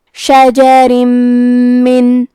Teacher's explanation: ادغام کا معنی ہے حرف کو حرف میں داخل کرنا، تو ہم تنوین کو میم میں ملا کے غنہ اور تشدید کے ساتھ یہ حکم کو ادا کریں گے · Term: ادغام بغنہ